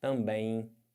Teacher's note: você além de estar nasalizando o é você tem esse M que vai ficar com som de i